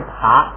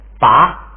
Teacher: 本来是爬，结果一加上加字不送气了，变成拔了